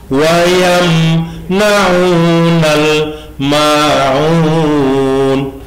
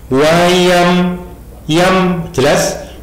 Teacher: Mim ketemu nun. Ini idhar safawi. Wayam yam jelas.